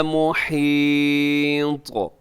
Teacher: مُحِيطٌ، آخر میں طا ہے تو حروف قلقلہ میں شامل ہے، جب آپ وقف کرتے ہیں تو اس میں کیا کریں گے جی، طا کو قلقلہ کریں گے